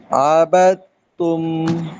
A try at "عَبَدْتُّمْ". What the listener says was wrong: ডাল মোটা করা যাবে না, আবিদুম না, আবিদুম বিদুম, ডাল পাতলা করবেন।